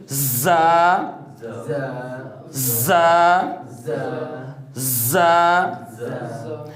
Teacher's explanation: اس بات کو آپ نے سمجھنا ہے کہ تینوں کی سیٹیاں علیحدہ علیحدہ ہوں گی انشاءاللہ جب سین صاد پہ جائیں گے، باقی ڈیٹیل اس کے اوپر جائیں گے، لیکن یہ پہلے زا کے متعلق دیکھیں اس بات کو آپ نے سمجھنا ہے کہ زا جو ہے چاروں دانتوں کو ساتھ ملا کے اس طرح کی سیٹی کے ساتھ ادا ہوگا · زا حروف صفیریہ یعنی سیٹی والے حروف میں سے ہے